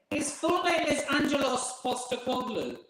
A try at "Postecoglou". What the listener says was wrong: Yeah, but it's actually pronounced Angelos Postecoglou, because the P is a B. So it's Postecoglou. pronounce it in English, you say Postecoglou.